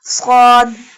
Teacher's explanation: from the tip of the tongue touching the inner edges of the top two and bottom two front teeth. Sad. Sad has a fatha sign.